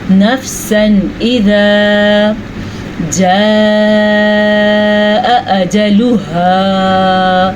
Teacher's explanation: اس مد کو 3 سے 4 حرکات عربیہ کے برابر لمبا کرتے ہیں. 4 سیکنڈ تک آپ اس کو لمبا کر سکتے ہیں.